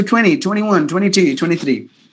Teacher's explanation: Because the NT combination, T is gone. It is mute in the American English.